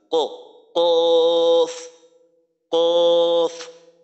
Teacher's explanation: জিহ্বার গোড়া তার বরাবর উপরের তালুর সঙ্গে লাগাইয়া উচ্চারিত হয় কফ